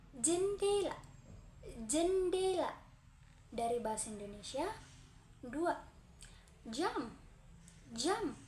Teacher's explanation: Cara pengucapannya tengah lidah menyentuh langit-langit keras pita suara bergetar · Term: fonem konsonem J